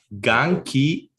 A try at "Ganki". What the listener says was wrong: Anki. It's not an English G.